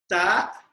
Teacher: When you say ta, the tongue is touching the inner part of the upper teeth